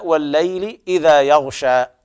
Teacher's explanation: والليل هنا اللام لام شمسية حكمها الإدغام، ولذلك وجد على اللام الأولى تشديد، إذن هي مرسوم المصاحف هي لام واحدة مشددة، دل ذلك على إدغام اللام الأولى في الثانية.